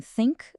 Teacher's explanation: Para o T surdo em think, a ponta da língua toca ali nos dentes da frente e o ar passa sem vibrar